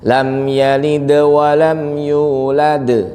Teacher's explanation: suara d-nya kan lebih jelas yang di akhir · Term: qalqalah kubra